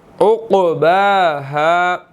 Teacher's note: قاف جو ہے وہ یہاں پر ایک تو موٹا ادا ہونا ہے اور قاف ساکن ہے، یہاں پر ہم نے قلقلہ کرنا ہے، ٹھیک ہے. اور آگے با کے اوپر کھڑی زبر ہے، ہم نے اس کو جو ہے وہ 1 سیکنڈ لمبا کرنا ہے.